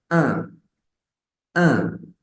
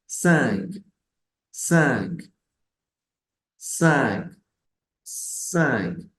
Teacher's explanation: es un sonido como una especie de a abierta nasal